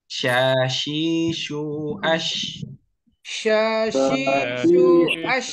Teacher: tengah lidah bertemu dengan Langit-langit. Tahan atas. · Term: huruf sya